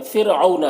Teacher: فرعون، یہاں پر رائے ساکنہ سے پہلے فا کے نیچے زیر ہے تو را کو باریک پڑھیں گے